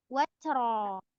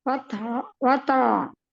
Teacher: Bukan watro. Ro-nya sukun. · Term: Ro sukun